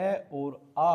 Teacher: कंठ्य जो कंठ के द्वारा बोले जाते हैं वह अ और आ होते हैं। जब आप बोल के देखोगे तो इसका आपको पता लग जाएगा।